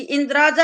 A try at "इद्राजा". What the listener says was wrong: इंद्राजा, ए पे बिंदी नहीं है, कहीं इंद्राजा लोग बोलते रहते हैं, वो गलत बोलते हैं ना, गलत लगा रखा है, वो इंद्राजा नहीं होता, इंद्राजा है, ये संधि हुई है, इत राजा, ये इसका अर्थ है अलग अलग।